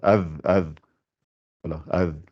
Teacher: la sortie du fa, c'est l'extrémité de la langue, avec l'extrémité des dents du haut. Ça fait af.